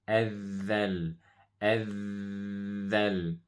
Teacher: dhal is a letter that we use the tip of the tongue and you touch the top of the teeth like this.